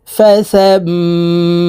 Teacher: 3 second পরিমাণ এই সা তাসদিদওয়ালা মিমের সাথে গুন্নাহ করে ধরে রাখবো